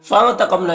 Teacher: قاف حروف مستعلیہ میں سے پر پڑھیں گے